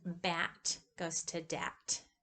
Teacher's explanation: It just goes to that, changes from the bilabial to the alveolar place of production